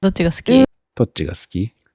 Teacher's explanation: Ski, that's suki, means something like liking or favored. The u sound in suki is commonly unvoiced.